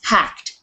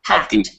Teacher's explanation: we don't say the Ed on the end it's hacked it's almost like a t on the end